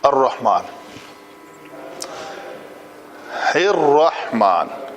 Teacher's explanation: یہ را کے اوپر جو زبر ہے اس کو ڈائریکٹ ایسے پڑھیں گے، را موٹی پڑھی جائے گی